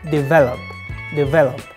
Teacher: because of its stress the stress is on the second syllable and the V not on the first syllable D develop develop